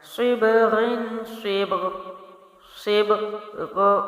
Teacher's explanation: با تک آپ باؤنس کریں گے، غین کا صرف آواز پیدا کریں گے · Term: کلکلا